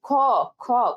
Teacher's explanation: তাহলে এখানে কিন্তু একটা মানে ক এর শেষে একটা উচ্চারণ কেমন আসে, অ, অ এর মতো, ঠিক আছে। খ, খ, খ এর সাথে কি আসে, একটা অ এর মতো উচ্চারণ আসে